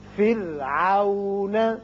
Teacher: یہ را باریک ہوگا اس لیے کہ پیچھے کسرہ یعنی زیر ہے